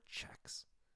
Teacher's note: But when you say that ch sound for checks, you should feel air.